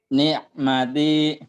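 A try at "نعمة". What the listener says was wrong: Nah, tekannya di madnya ya.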